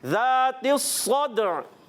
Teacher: اور صاد کو یہ ایکسٹرا موٹے حروف میں سے پر کریں گے. دال میں حرف قلقلہ ادا ہوگا کیونکہ ساکن ہے, آواز لوٹ کر آئے, اور اس کے ساتھ ساتھ عین کی ادائیگی بھی کلیئر رہے گی.